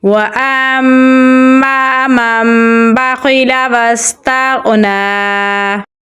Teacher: واو کو سین کے ساتھ ملائیں گے کیونکہ سین کے اوپر جزم ہے. تا کو غین کے ساتھ ملائیں گے کیونکہ غین کے اوپر بھی جزم ہے اور غین کو پوری یعنی موٹا پڑھیں گے. نون پہ کھڑی زبر ہے تو اسے ہم لمبا پڑھیں گے.